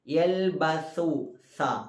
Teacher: സാ എന്ന അക്ഷരത്തിൻ്റെ മഖ്റജ് നേരത്തെ നമ്മൾ ദാലിൻ്റെ മഖ്റജ് പറഞ്ഞതുപോലെ നാവിൻ്റെ അറ്റവും മേലെ മുൻപല്ലിൻ്റെ അറ്റവും തന്നെയാണ്.